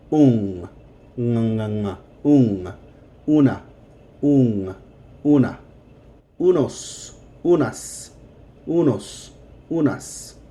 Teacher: this un is going to sound like it has a soft G after the N in English